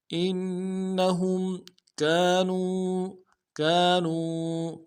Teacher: ہا کو میم ساکن کے سامنے لانا ہے، میم ساکن میں غنہ کریں گے۔ انہم کانوا، کاف کے ساتھ الف مدہ ہے، ایک الف مقدار میں کھینچیں گے، نون کو واو کے سامنے لانا ہے، واو مدہ ایک الف مقدار میں کھینچیں گے۔